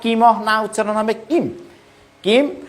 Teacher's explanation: যখন হসন্ত থাকবে তখন মটা পূর্ণ ম উচ্চারণ হবে না, কিম না উচ্চারণ হবে কিম, কিম।